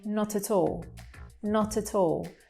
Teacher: it sounds like one word where it's three actually just linking together